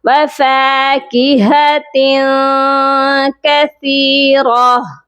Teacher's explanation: وفاکہۃ، ہا کی آواز سینے والے حلق سے آئے گی اور تا کے نیچے دو زیر ہیں، اس تنوین پر ہم اپنی آواز کو ناک میں چھپائیں گے۔